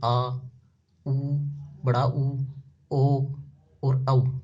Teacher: पश्च का मतलब होता है एकदम पीछे का हिस्सा, जीभ का जो पीछे का हिस्सा उससे बोले जाने वाले स्वर, जैसे आ, उ, बड़ा ऊ, ओ और औ।